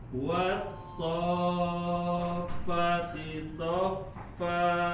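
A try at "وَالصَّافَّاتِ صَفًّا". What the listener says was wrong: Masih belum panjang fa-nya. Was-soffati soffa.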